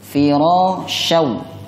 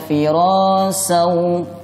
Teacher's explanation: shin ini memiliki sifat tafasyi. Ada hembusan napas yang kasar saat pengucapannya.